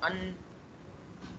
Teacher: अन्ना, अब मैं अन्ना कहते हुए अगर मैं अपनी नाक बंद कर दूं अन, तो अब मेरे आवाज़ निकलेगी नहीं, वहीं पे फंस जाएगी